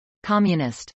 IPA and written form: kˈɑːmjənəst (communist)